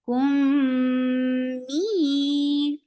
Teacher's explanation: The akmal gunna is the longest gunna in Quran. So give a nice sound in your nose.